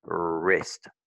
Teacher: le R déjà se prononce comme s'il y avait un petit W de toute façon. Parce que le son vient de devant de la langue